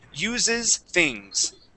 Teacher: we have that s ending and then it jumps right to that th